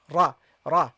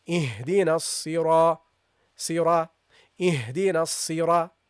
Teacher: the ra, guys, if it is accompanied by a fatha, then it should be pronounced heavily